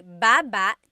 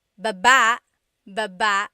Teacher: emphasis is on the second syllable